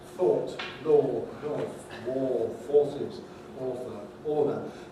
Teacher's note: this is the most rounded vowel in english